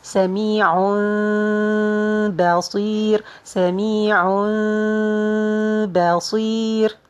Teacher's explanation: so you're gonna change the noon and the tanween to be meme, and we'll be hiding the meme and adding ghunna. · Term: iqlab